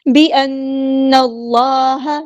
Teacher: ساتھ ملا دینا ہے، حمزۃ الوصل ہمارا ڈراپ ہو جائے گا، اللہ کا جو لام ہے یہاں پہ ہیوی موٹا ادا ہوگا کیونکہ اس سے پہلے زبر یعنی فتح آئی ہے